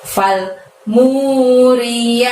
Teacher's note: Falnya pendek, munya panjangnya 2, mu gitu ya. Fal muri, ri-nya pendek, ya-nya panjangnya 2 dan ti-nya juga pendek